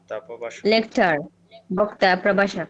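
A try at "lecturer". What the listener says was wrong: লেকচার না, লেকচারার বক্তা প্রভাষক।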